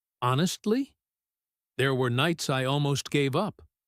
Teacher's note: with that little rise on honestly almost like a question to himself. And then let the rest of the sentence fall heavier more serious.